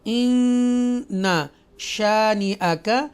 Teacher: گنہ مین ناک میں آواز لے کر جائیں گے اور ادا کریں گے۔